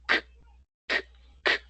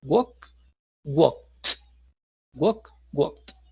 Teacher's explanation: si tocamos la garganta en ese último sonido, vamos a sentir que no hay vibración.